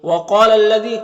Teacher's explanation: وَقَالَ الَّذِي، قاف حروف مستعلیہ میں سے ہے اور یہاں پر الف مدہ ہے، اور یہ جو لام مشدد حرف ہے تو پیچھے والے متحرک حرف لام سے مل کر پڑھا جائے گا۔ یہ الف میں کوئی حرکت نہیں، اس کو نہیں پڑھنا۔